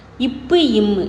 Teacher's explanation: மேல் உதடும் கீழ் உதடும் ஒன்னு சேர்ந்து இப்பு இம்ங்கிறது உருவாகும்